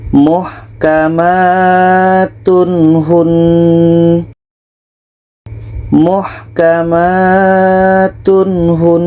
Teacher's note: Di sini ada tanwin bertemu dengan ha. Ini izhar halqi, tidak ada dengung dan harus dibaca jelas.